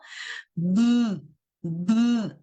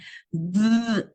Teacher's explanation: es sonoro porque si nosotros colocamos nuestra manito aquí a la altura de nuestra garganta y producimos el sonido, B, B, nos vamos a dar cuenta que hay una vibración